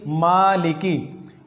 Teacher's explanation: तो इसकी मिसाल मैंने आपको दी, मालिकी, मीम के ऊपर ज़बर है, यहाँ हम गुन्ना नहीं कर सकते, नाक में आवाज़ नहीं ले जा सकते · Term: अदम गुन्ना